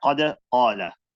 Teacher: the qa with the fatha, there's a isti'la, or there's a natural gap between the roof of the mouth and the tongue when we do the fatha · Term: big tafkhim